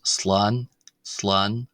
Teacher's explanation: with a long aa sound rather than a short a sound